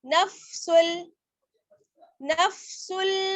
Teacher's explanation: नफ्सुल मुतमइन्ना, सीन को आगे लाम से मिलाएंगे